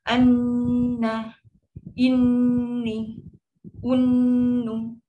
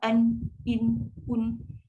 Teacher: Dia kan dengung paling panjang dia bersabdu. Tapi kalau dia yang biasa ni, dia ada tapi dia sikit je lah.